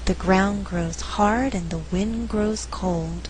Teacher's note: In this faster reading, only 4 content words are being stressed: ground, hard, wind, cold. The resulting rhythm is 1 and 2, 3 and 4.